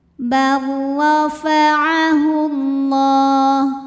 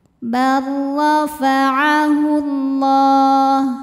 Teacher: barisnya di atas cara membacanya adalah ditebalkan pangkal lidah dinaikkan bofa'ahullah lam pada lafaz Allah atau lam jalalah dibunyikan secara tafkhim sebab huruf sebelumnya berbaris damah